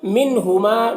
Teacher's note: یہاں پر نون میں اظہار ہو رہا ہے، اس نون کو بھی جلد پڑھنا ہے۔ ہما میں الف مدہ ہے۔